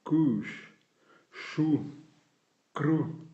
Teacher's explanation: U avec accent circonflexe, U long et sourd, presque nasalisé